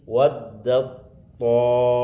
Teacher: Mesti diidghamkan. Waddat ta, masuk ke to-nya, dilebur. Taknya dimatikan, dimasukkan ke to. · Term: Idgham mutajanisain